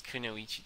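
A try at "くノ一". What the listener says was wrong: You gotta blur your syllables together. That's how the Japanese say it. I mean, they don't say tusu, they say su.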